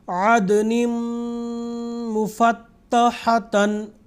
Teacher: مثال کے طور پر عدن مفتحتن، عدن، دال کے نیچے دو زیر ہیں یعنی تنوین، اس کے بعد یہ تنوین جا کے میم میں مل رہا ہے جو کہ یرملون میں سے ایک حرف ہے، تو یہاں پہ ادغام ہوگا، اور ادغام غنہ کے ساتھ، یعنی ایک الف کے برابر یا 2 یا 3 سیکنڈ تک ناک سے آواز نکالنا۔